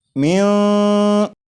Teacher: ایسے معلوم ہو رہا ہے کہ جیسے میم کے بعد جو آواز ہے وہ اوپر کی طرف جا رہی ہے